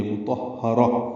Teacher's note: اور اس کو تائے مربوطہ سے وقفاً ملا دیں گے، مطہرہ، اور اس پہ ہمس ہوگا، ہا پہ یعنی سانس جاری رکھیں گے